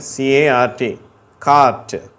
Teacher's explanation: இங்கிலீஷில் வந்து நம்ம இந்த ஆ சொல்லும்போது அந்த அளவு வாய் திறக்கிறது இல்லை. ஆனால் அது நெடில் ஓசை தான், ஆ அப்படின்னு தான் சொல்கிறோம்.